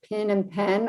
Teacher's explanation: if you're in the South, like pin and pen, oftentimes they sound the same